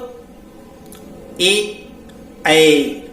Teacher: कंठ तालव्य स्वर ए, ऐ, ये कंठ और तालु से उच्चारित होते हैं।